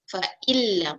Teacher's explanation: Nun dia terus masuk pada lam. Dia masuk tanpa dengung. Fa'il lam. Dia tak boleh bunyi nun.